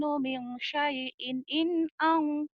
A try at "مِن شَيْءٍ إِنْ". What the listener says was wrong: Jangan buru. Min syai'in. Jangan buru-buru di situ. Min syai'in nih. Min syai'in. In.